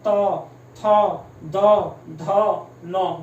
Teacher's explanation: दंत का मतलब जो जीभ है वो आपके दांतों को क्या करेगी, टच करेगी।